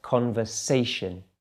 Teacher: it's actually on the third syllable primary stress